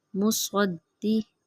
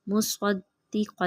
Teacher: سواد موٹا پڑھیں گے گول کر کے